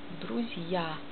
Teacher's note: Buchstabe Z wird mild und danach kommt J. Und dann A.